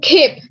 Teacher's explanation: the p is not aspirated in its final position